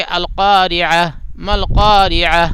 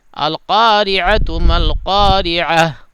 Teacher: یہ گولتا اگر اس پہ سانس توڑ دیں گے، وقف کریں گے تو وہ ہا ساکن ہو جائے گی. یعنی ایسی ہا جس کے اوپر جزم ہو یہ مان لیا جائے گا اور ایسے پڑھا جائے گا.